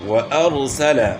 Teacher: واؤ میں ہونٹ گول ہوں گے، نہ تمام گول ہوں گے